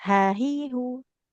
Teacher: Jadi huruf H itu di tengah tenggorokan tempat keluarnya.